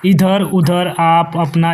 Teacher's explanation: जिनकी ध्वनि केवल मुख से निकलती है वे निरनुनासिक स्वर कहलाते हैं